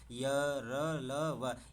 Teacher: जिन वर्णों के उच्चारण में जीभ, तालु, दांत और ओष्ठ के सटाने से होता है, परंतु यह कहीं भी पूर्ण स्पर्श नहीं होता है, अंतस्थ व्यंजन कहलाते हैं।